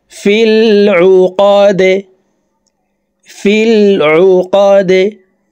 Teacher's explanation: دال زر دي في العقاد দালকে ওয়াকফের ক্ষেত্রে সাকিন করে ফেলবো দাল যেহেতু কলকলার হরফ নিচের দিকে ধাবিত করে ধাক্কা দিয়ে সাকিন করতে হবে